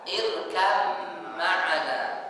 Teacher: ba sukun bertemu dengan mim sama makhrajnya tapi beda sifatnya jadi setiap huruf yang sama makhraj beda sifat disebut dengan Idam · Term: Idgham mutajanisain